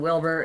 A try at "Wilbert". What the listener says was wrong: B-E-R-T. Not Wilbur. I mean, a lot of people, I haven't corrected, but no, it's B-E-R-T.